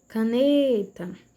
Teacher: a penúltima sílaba da palavra é a tônica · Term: paroxítona